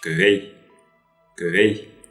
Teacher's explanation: Значит, согласная будет переднего ряда, которая соответствует русской букве К.